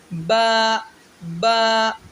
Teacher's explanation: احتیاط، الف مت پڑھیں، الف پڑھنے سے بچا جائے۔ با دونوں ہونٹوں کی اندرونی تری جو منہ کے اندر والا حصہ ہے، گیلے حصے کے ملنے سے با ادا ہوگا